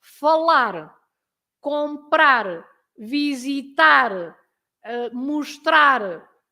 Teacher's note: you always stress the last part of the verb, the word, because it finishes with an R.